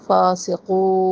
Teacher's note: قو قاف کو موٹا پڑھنا ہے. اینڈ میں وقف بلا اسکان.